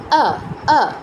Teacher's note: কিন্তু সংস্কৃত যেই এটা উচ্চারণের ক্ষেত্রে আমাদের ঠোঁটটা ডান থেকে বামে প্রসারিত হবে, মানে উপর থেকে নিচে প্রসারিত না হয়ে ডানে আর বামে প্রসারিত হবে, অ না হয়ে আ হবে।